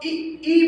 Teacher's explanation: जब आप इ इ बोलोगे तो आप देखिए आपकी जीभ दोनों तरफ हो ऊपर वाले तालू से मिलती है